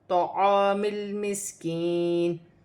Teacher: میم کو لام کے ساتھ ملا کر پڑھا جائے گا